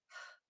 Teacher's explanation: We have to break off the uh from that voiceless h sound, right? That H is only air, no vocal cords are used.